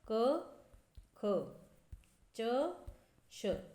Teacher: प्रत्येक वर्ग का पहला दूसरा वर्ण यह क्या हो जाते हैं अघोष वर्ण हो जाते हैं